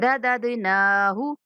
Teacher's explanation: یہ جو دوسرا دال ہے یہ ساکن آ رہا ہے، اس کے اوپر ہم نے کلکلا کرنا ہے، اس کو ہلا کے پڑھنا ہے